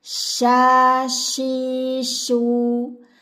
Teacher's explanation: Huruf shin tidak menggunakan kedua bibir, hanya tengah lidah bertemu dengan langit-langit di atasnya.